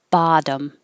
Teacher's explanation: the stressed vowel is ba so you have to open a lot